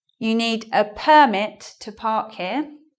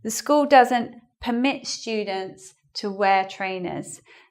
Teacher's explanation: And it's similar to the verb, which means to allow. So permit here is a noun. Because it's a noun, we're going to stress the first syllable. And here, permit is in the verb form, so we're going to change it.